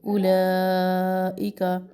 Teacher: واو مدہ میں واو کے اوپر ساکن ہونا چاہیے، یہاں پر واو خالی ہے تو ہم حمزہ کا سنگل پیش ادا کریں گے۔ اولئک لا مد متصل کو ہم 2 الف برابر لمبا کریں گے